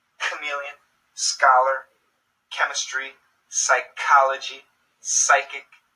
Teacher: these Greek originating words usually have a K sound when spoken in English